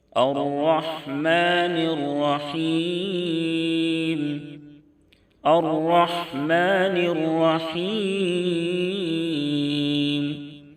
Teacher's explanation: را کے اوپر زبر ہے، اس لیے را کو موٹا پڑھیں گے